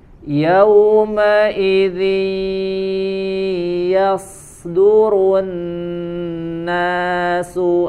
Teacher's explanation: ketika ada nun sukun ataupun tanwin disempurnakan dengan tasydid tasydid ya dan disempurnakan juga dengan dengung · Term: idgham bighhunah